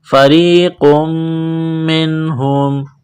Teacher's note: نون ساکن کے بعد ہا ہے حروف حلقی ہے تو نون ساکن پر غنہ نہیں کریں گے